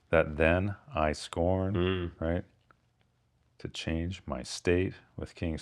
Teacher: neither I nor my is stressed there